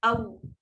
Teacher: Waw muncung mulut sebab waw ada huruf bibir. Dia bolehlah muncung sebab dia memang bibir.